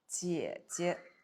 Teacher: Again, the second Hanzi is neutral tone.